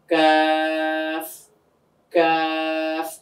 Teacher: জিহ্বার গোড়া থেকে একটু আগে বাড়িয়ে কাফ, কাফ, এভাবে।